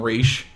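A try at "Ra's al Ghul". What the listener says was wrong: Raish. There's no SH.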